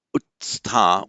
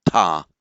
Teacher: where you get two stops, ut and the t of sta, where you have an s coming between them, the s drops out.